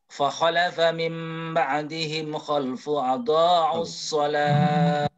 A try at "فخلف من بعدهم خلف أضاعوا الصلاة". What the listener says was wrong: Khalfun. Situ ada idhar, Ustaz.